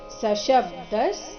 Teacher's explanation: ಸ ರಸ್ವ ಬರಬೇಕು ಅಂದ್ರೆ ಸ ಮುಂದಿನ ಶಬ್ದ ಅದಕ್ಕೆ ಜೋಡಿಸಿ ಹೇಳಬೇಕು ಸ ಶಬ್ದಸ್ ಕೊನೆಗೆ ಅರ್ಧ ಸಕಾರ ಇದೆ ಇಲ್ಲಿ ಸ ಶಬ್ದಸ್ ತುಮುಲೋ ತುಮುಲೋ